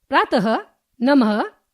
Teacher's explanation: विसर्ग soft aspirate. इसका प्रयोग प्राय संस्कृत में ही पाया जाता है। इसका उच्चारण ह की भांति होता है।